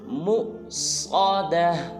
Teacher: मीम के बाद जो वाव है इसके ऊपर हमज़ा है, लिहाजा जब जोड़ करेंगे तो झटके के साथ पढ़ेंगे, जैसे मीम हमज़ा पेश मु, पढ़ेंगे मुसादा।